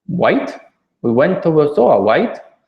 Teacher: an R doesn't sound like an R it starts to sound like an L or a w